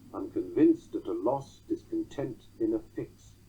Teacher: It is a tetrameter. It has 4 stressed syllables, vinced, loss, tent, and fix